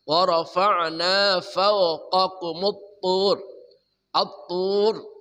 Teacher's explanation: sifat utamanya itbaq mengatup dengan kuat di langit-langit atas